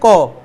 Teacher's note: যেমন আমরা যদি বলি ব্যঞ্জন বর্ণের মধ্যে ক, তাহলে ক উচ্চারণ করতে আমাদের শ্বাস বের হচ্ছে কম, অল্প প্রাণ